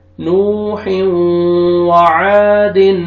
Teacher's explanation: یہ الف مد ہے، الف سے پہلے فتحہ آپ نے عین کو کھینچنا ہے، اور اسٹارٹنگ میں واو مد ہے، واو سکون سے پہلے ضمہ، نون کو آپ نے کھینچنا ہے. · تنوین کے بعد واو آ رہا ہے، ادغام کریں گے، حروف یرملون میں سے واو ہے تنوین کے بعد، تو ادغام غنہ کے ساتھ کریں گے.